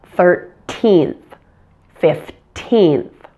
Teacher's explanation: in most situations in American English primary stress falls on the teen part of these numbers